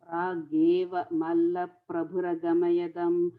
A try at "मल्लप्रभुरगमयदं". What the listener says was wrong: Gamayadam alla gamadayam. Other way around.